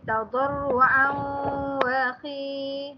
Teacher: Ni ialah tanwin bertemu dengan huruf waw, dia jadi idgham ma'al ghunnah.